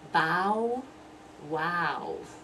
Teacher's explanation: for the B, everything has to be completely closed to make that first B sound